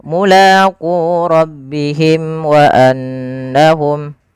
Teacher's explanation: Syafawi berarti dia berkenaan dengan berkenaan dengan bibir kita. Maka karena makhraj daripada huruf mim di bibir, maka suara mimnya di sini harus dijelaskan. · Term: izhar syafawi